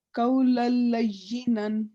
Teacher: لل کو ہم لمبا نہیں کریں گے